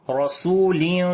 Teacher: والصبح اذا تنفس انه لقول رسول کریم انہو نون کے اوپر شاید غنہ کریں گے، ہو کو لمبا کریں گے، الٹا پیش ہے اس کے اوپر، لقولو واو یہاں پر لین ہے، نرم پڑھیں گے، انہو لقولو رسول کریم، را کو موٹا پڑھیں گے، زبر ہے اس کے اوپر